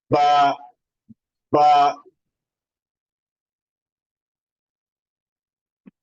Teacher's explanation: बा जो है हमारे अदा होता है inner part of the both lips. बा, बा, होगा एक दूसरे के साथ, ये टच होगा।